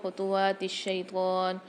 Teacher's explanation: ولا تتبعوا خطوات الشیطان، عین کی آواز واضح ہونی چاہیے، واو کے اوپر کھڑا زبر 1 الف مقدار کھینچیں گے